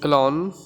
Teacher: we pronounce the letter “I” as Uh, like the french “Je”, it sounds like the schwa sound.